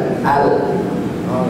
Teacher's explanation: contoh huruf lam apab bila kita baca lam dengan benar maka ketika dia sukun hujung lidah naik dan nempel ujungnya saja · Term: sifat inhiraf